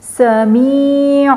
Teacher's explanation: اب جب یہ میم بنی ہوئی ہے تو آپ کو پتہ چل جانا چاہیے کہ یہاں پہ اقلاب کا قاعدہ ہو رہا ہے، اور اقلاب کے قاعدے میں ہم نے کیا کرنا ہے، تنوین کی جو آواز ہے اس کو ہم بالکل ختم کریں گے اور میم کی آواز جو ہے نا وہ اس میں آئے گی